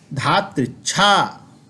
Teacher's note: ऋकार यह रेफ के रूप में परिवर्तित हो जाएगा